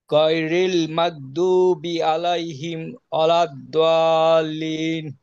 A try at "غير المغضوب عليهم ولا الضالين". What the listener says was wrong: ওকে, মাশাআল্লাহ, ছোট বাবু খুব সুন্দর পড়তেছে।